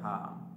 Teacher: স্বাভাবিকভাবে হলকের শেষ ভাগ হতে উচ্চারিত হয়